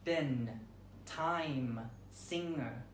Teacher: Nasalization. Vowels are nasalized when preceding a final nasal, expressed by this symbol.